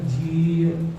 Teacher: ਜਿਹੜੀ ਜੱਜੇ ਦੇ ਨਾਲ ਬਿਹਾਰੀ ਲੱਗੀ ਹੈ ਉਹਨੂੰ ਥੋੜਾ ਜਿਹਾ ਲੰਬਾ ਕਰਕੇ ਪੜ੍ਹਨਾ ਪਏਗਾ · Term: ਦੀਰਘ ਮਾਤਰਾ